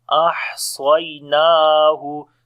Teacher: On the ha we make a hums quality, the continuation of our breath. Ahsaynahu. Swad we read in heavy sound, and then this is ya lean here.